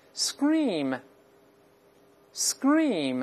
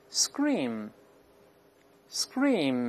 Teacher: 这个还是浊化成▁g，▁尽管呢他听不太清楚，但依然有浊化的痕迹